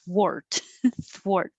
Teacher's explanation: Make a TH first. And I can't round my lips when I make the TH. And then I have to round my lips.